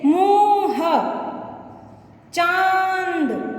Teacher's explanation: तो स्वर के इस व्यंजन के बाद में, स्वर नहीं, व्यंजन के बाद में जब हम एकदम से इसका उच्चारण करेंगे तो तुरंत हमारे नाक और गले में कंपन होती है